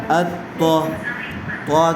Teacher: تو کے اوپر تشدید ہے، اس لیے تو کو 2 مرتبہ پڑھیں گے، ایک مرتبہ حمزہ کے ساتھ ملا کر اور ایک مرتبہ خود تو کی حرکت کے ساتھ۔